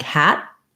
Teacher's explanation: We sometimes don't release that final T on either of these